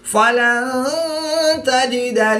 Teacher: نون ساکن کے بعد تا حرف اخفا میں سے ہے تو یہاں پر اخفا ہوگا یعنی غنہ زمانی کر کے پڑھیں گے